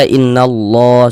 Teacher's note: Huruf lam jalalahnya kita tebalkan, sehingga kita baca innallah seperti itu. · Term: tafkhim